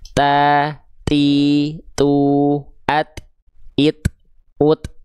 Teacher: Jadi ketika kita lafalkan ada percikan nafasnya.